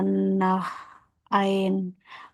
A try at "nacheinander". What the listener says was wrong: Entschuldigung, nacheinander. nacheinander, tapi nacheinander. Ya, einander. Dia ngegabung einandernya.